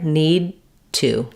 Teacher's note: What I need to do is stop here, need to. So it's an unreleased D, and then I release it onto the T sound.